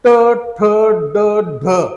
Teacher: त्यानंतर ट, ठ, ड, ढ ही जी वर्ण आहेत, तुम्ही जर हा उच्चार करून बघितला, आपला जो वर टाळूचा भाग आहे गोल घुमटकार त्या भागाला आपली जीभ स्पर्श होते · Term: मूर्धन्य वर्ण